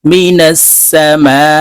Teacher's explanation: মদের হরফের উপরে মোটা চিহ্ন বামে হামজা আছে তাই এই মিমকে চার আলিফ টেনে পড়তে হবে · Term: মধ্যে মুত্তাসিল